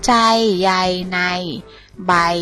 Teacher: มีเสียงเหมือนสระอะแล้วมียยักษ์เป็นตัวสะกดค่ะ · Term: สระไอไม้ม้วน